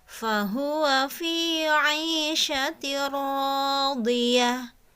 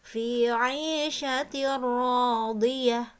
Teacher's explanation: Nah, di sini ada tanwin bertemu dengan huruf ro. Jadi bunyi n pada tanwinnya itu dibuang langsung masuk ke huruf ro tapi tanpa disertai gunnah ya. Langsung saja fi 'aisyatir radiyah, seperti itu ya.